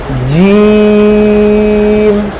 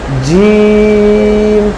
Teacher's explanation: জিহ্বার মধ্যখান উপরের তালুর সাথে লাগিয়ে একটু চাপ দিয়ে বলতে হবে জিম